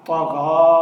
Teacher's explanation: یہ یا ساکن رہے گا یعنی خاموش رہے گا، یہ یا نہیں پڑھا جائے گا